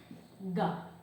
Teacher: G, ele é velar. G. Vai lá pro véu palatino.